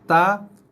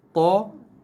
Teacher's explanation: Keluarnya bunyi ta, nipis, to, tebal. Ta dan juga to, satu makhraj, satu rumah.